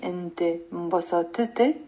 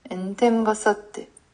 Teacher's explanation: No, we have to say enti mbasatte. And we have to merge the ta and the te sounds.